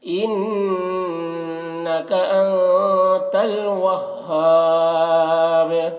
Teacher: با میں قلقلہ کریں گے کیونکہ وقف کی وجہ سے یہاں پیش یہ سکون سے بدل جائے گا، تو قلقلہ کریں گے، یہ حروف قلقلہ میں سے ہے۔